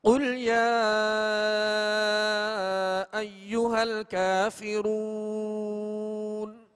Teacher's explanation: بسم اللہ الرحمن الرحیم قل یا ایہا الکافرون قل شروع کا جو ہے وہ دو نقطے والا قاف ہے، یہ پر حرف ہے، اس کو پر پڑھیں گے، کل نہیں پڑھیں گے بلکہ قل موٹا پڑھیں گے، اور یا پر جو مد ہے اس کو دراز کریں گے، کھینچیں گے